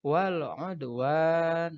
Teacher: Nah, di samping ada alif lam komariah, kemudian ada dal sukun, membacanya mantul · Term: kolkola sugro